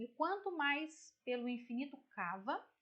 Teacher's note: a palavra pelo, ela termina em vogal, correto? A palavra infinito, ela começa com vogal. Então aqui nós vamos juntar essas 2 sílabas. Por quê? Porque quando a gente pronuncia, quando a gente fala, é como se a gente juntasse num som só.